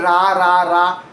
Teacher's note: Your tongue tip does not touch anywhere at all. It curls back and up, floating in the middle of your tongue, with the middle of your mouth, without touching the roof, the teeth and anywhere else, while the back of your tongue pulls slightly backward and the lips often round a little. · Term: American R